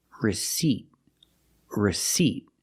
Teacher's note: long e like green bean the word is pronounced receipt receipt we're putting the stress on the second syllable · We don't pronounce the word receipt. We don't use the short I like this is. We use a long E like green beans.